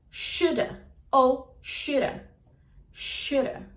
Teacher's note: Should have que vai virar sha